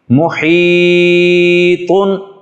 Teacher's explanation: حا یہ وسط حلق سے ادا ہوتی ہے اور اس میں تھوڑا سا سانس نکالا جاتا ہے